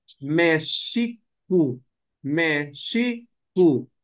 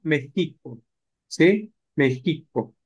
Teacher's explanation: los españoles como no podían decirle sh terminan diciendo Mexico